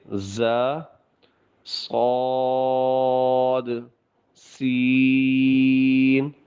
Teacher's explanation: کچھ حروف ایسے ہیں جن کی آواز کے اندر سیٹی پائی جاتی ہے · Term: حروف صفیریہ